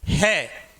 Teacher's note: इसे सघोष के अंतर्गत शामिल किया गया है, क्योंकि है का जब हम उच्चारण करते हैं तो इसका उच्चारण स्थान काकल है और ध्वनि गूंज के साथ बाहर निकलती है, इसीलिए है को सघोष के अंतर्गत।